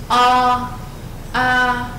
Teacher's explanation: khi đọc A của tiếng Trung, hãy mở miệng rộng hơn A của tiếng Việt rất nhiều.